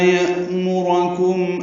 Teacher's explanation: یأمرکم میں حمزہ ساکن جھٹکے سے ادا کیا جائے گا. میم کو معروف طریقے سے جلدی پڑھیں گے، را کو پر پڑھیں گے لیکن جلدی پڑھیں گے.